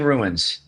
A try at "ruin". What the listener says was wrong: You're pronouncing it rune, which is like RUNE.